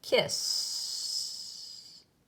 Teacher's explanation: Now, when a word ends in a sound that doesn't move, where your throat doesn't make that little shaky feeling, like kiss. It's just more like just air hissing there, but no vibration. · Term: the sound that doesn't move